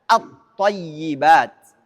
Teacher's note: maka lamnya tidak tampak karena kita sudah meleburkan ke huruf thnya · Hukumnya apabila ada al huruf syamsiyah maka harus dibaca idgham ke huruf setelahnya atau dileburkan ke huruf setelahnya. Kalau al masuk pada to, maka lamnya tidak tampak karena kita sudah meleburkan ke huruf to-nya. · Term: Alif lam syamsiyah